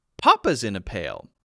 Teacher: The way that it's meant to be said is there's a new thing that's happening that's novel and interesting, that someone else is in a pail now, and to stress who is in the pail, I need to stress the name of the person in the pail, not the pail.